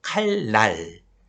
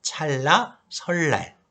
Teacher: 자, 칼 뒤에 표기상으로 니은이 왔죠? 리을 뒤에 니은이 오니까 리을로 바뀌죠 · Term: 유음화